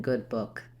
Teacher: It's a high back rounded lax vowel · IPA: /ʊ/